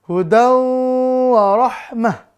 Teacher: Maka ini dengan dengung, idgham bigunnah. Durasi dengungnya 2-3 harokat. Maka harus ditahan.